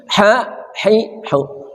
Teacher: ha rahim dari tengah kerongkongan